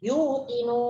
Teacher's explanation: Itu mad arid disukun, panjangnya 6 harakat.